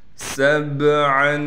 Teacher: سَبْعًا، سین کو با سے ملائیں گے، با حروف قلقلہ میں سے ہے، با ساکن ہے لہٰذا با پر آواز کو ہلائیں گے، عین پر اخفا یعنی غنہ کیا جائے گا۔